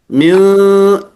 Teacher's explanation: Ketika dia berbaris bawah tetap ada karakter yang tebal sehingga cara membacanya ghasiqi, dengan menurunkan rahang bawah.